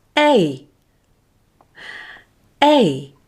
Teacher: as in men say men and then add e after e gliding smoothly from e to e making the sound less loud as the glide progresses a a this will give main so now we know how